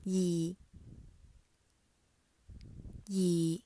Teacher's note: The last one, the low level tone. It stays at a constant low pitch for its duration of a syllable. For example, 二.